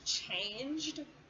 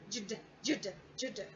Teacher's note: you'll notice that here the G sound actually changes to more of a J. So you want to have J plus D, the D ending. Jd, jd, jd.